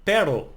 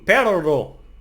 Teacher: The single R in words like pero, but, no, is a soft sound. It's a little bit softer. While the double R in perro, no, dog, is a trilled sound